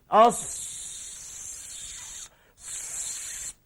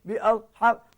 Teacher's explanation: Jadi mesti ada satu bunyi siulan. Kerana sana dia bersifat safir.